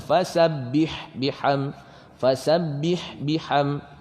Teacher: Ha ni, ha pedas ni jangan tekan. Jangan ditekan. Kita keluarkan angin.